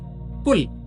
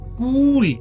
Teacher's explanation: अगर हम इसी को दीर्घ ऊ बना दें तो बन जाएगा कूल, जिसे इंग्लिश में, अंग्रेजी में कहते हैं ठंडा, कूल और कुल।